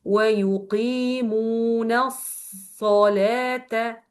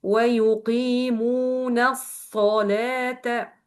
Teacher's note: you will hold the first صاد with sukun. After this, you will add to this صاد the صاد with fatha.